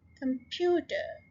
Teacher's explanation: stress के किसके ऊपर है, सेकेंड syllable के ऊपर और ये 3 syllable word है